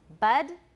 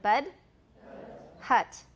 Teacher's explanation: an American it's close to a schwa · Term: wedge